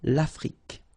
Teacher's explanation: Same thing here. Final it's only the k at the end that you will hear